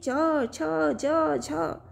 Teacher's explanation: नीचे आपका है संघर्षी व्यंजन स्पर्श संघर्षी यानी जिसका स्पर्श यानी एक दूसरे को स्पर्श करते हुए संघर्ष करते हुए वायु बाहर निकले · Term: स्पर्श संघर्षी व्यंजन